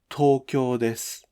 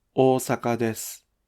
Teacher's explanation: when the first syllable of a word is two moras long, the word initial mora's pitch doesn't drop.